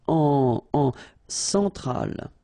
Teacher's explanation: L'Amérique centrale, same thing here, centrale, remember, E-N, nasal, so it goes in your nose, en, centrale, all right?